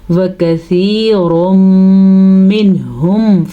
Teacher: آگے اظہار کا قاعدہ ہے, نون کو ظاہر کر کے پڑھنا ہے